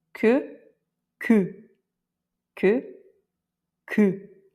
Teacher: on n'a pas un E qui est très fin dans la bouche. Là, on va encore remonter le son et le mettre dans le nez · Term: E nasal